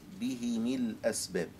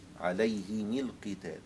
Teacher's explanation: أبو عمرو يكسر الميم فتصبح الهاء والميم مكسورتين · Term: بكسر الهاء والميم